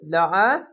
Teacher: লাম যাবার লা আইন যাবার আ আইনটিকে মোটা করে গলা চিপে পড়বেন